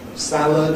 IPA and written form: ˈsæləd (salad)